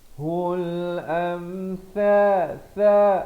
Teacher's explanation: am itu izhar syafawi, sempurnakan saja jangan panjang